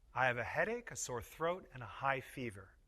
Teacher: When we say a list of items, the voice often goes up on each item before the last one. The voice goes down on the last item in the list. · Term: Intonation of lists, intonation of lists